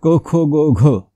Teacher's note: या वर्णांचा उच्चार जिव्हामूलीय म्हणजे कंठातून होतो जिभेच्या मुळापासून